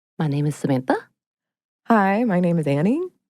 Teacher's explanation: uptalk is the practice primarily associated with women of ending phrases and sentences on a higher note